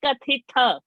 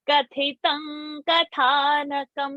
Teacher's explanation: Ka is alpa prana, tha is mahaprana, ta is alpa prana.